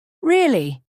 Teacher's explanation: if I say it with Rising intonation really now I sound surprised